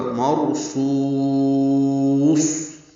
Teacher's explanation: اب اس کو لمبا کریں گے، پھر صاد پر ہے اور اس پہ وقف کریں گے تو ہمس ہوگا